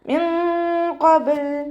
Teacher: മിൻ ഖബൽ നൂൻ സാക്കിനയ്ക്ക് ശേഷം ഇഖ്ഫാൻ്റെ ലെറ്ററായിട്ടുള്ള ഖാഫ് വന്നിട്ടുണ്ട്. നൂൻ സാക്കിനയെ മറച്ചു വെച്ചിട്ട് മണിച്ചോതി കൊടുക്കുക കേട്ടോ. നൂനിൻ്റെ സൗണ്ടിനെ വ്യക്തമായിട്ട് കേൾപ്പിക്കരുത്.